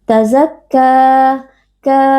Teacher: Mad Thobi'i karena ada Alif yang sebelumnya berharakat fathah dibaca panjang dua harakat